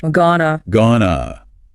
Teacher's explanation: The phrase going to is almost never pronounced fully in conversation. It reduces to gonna.